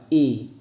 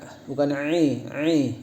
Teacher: harusnya jelas i ya, dia bukan dari tenggorokan tengah tapi dari tenggorokan bawah.